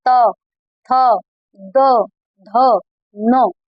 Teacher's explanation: उसके बाद दंत है, जब हम अक्षर बोलते हैं दांत से टच हो रहे, देखिए त, थ, द, ध, न। जब भी हम कोई अक्षर बोलते हैं दांतों के बीच में जीभ आ रही है, मतलब वो दंत है